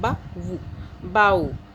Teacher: लीन हो रहा है, हम आवाज़ को नहीं खींचे, बा वू, अलग अलग एक्नॉलेज करके दोनों हरूफ को इकट्ठा जोड़ के एक्नॉलेज करके पढ़ रहे हैं, बा वू बाऊ।